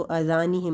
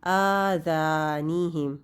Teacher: आ और ज़ा दोनों एक जितने होंगे